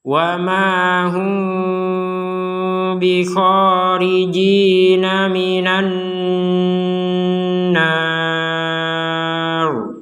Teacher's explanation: Ini mim sukun ketemu ba itu kita baca samar seperti barusan ketika kita menggabungkan mim sukun ini kepada huruf ba.